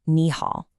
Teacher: The first one changes to a rising second tone, so it becomes nih.